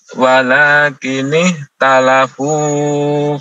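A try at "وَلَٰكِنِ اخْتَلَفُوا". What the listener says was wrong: walakin ikhtalafu faminhum. Jangan terlalu panjang fo-nya.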